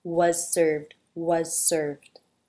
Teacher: Was, the teeth come together to make the Z. You might actually hear the Z here simply as the S because it's followed by an S, so the Z might just get dropped.